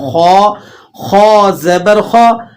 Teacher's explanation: یہ موٹے پڑھے جانے والے جو 7 حروف ہیں ان میں سے خو ہے، تو خو کو آپ نے منہ بھر کے ادا کرنا ہے۔ خو خو زبر خو، آخو آخو آخو، اس طرح سے نہیں پڑھیں گے۔ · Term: خو موٹا